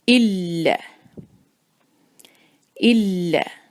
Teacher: لام پر ہے شدہ، اس پر جو ہم ملائیں گے تو تھوڑے سے زور کے ساتھ